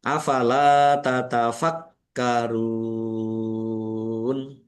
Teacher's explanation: Lam fathah alif mat tobi'i panjang 2 harokat. Kafnya ada tasdidnya dibaca double, ditekan dan ditahan biar tampak doublenya.